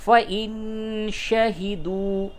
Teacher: واو مدہ ہے، اس کو تھوڑا سا کھینچئے